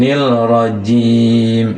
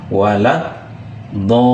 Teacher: Kalau lam syamsiah alif lam ini tidak dibaca. Tidak ya. Dia langsung ke huruf sesudah lam itu.